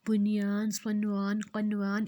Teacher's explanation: یہ جو لفظ ہیں بنیان، صنوان، قنوان، ان کے نون ساکن پر غنہ نہیں ہوتا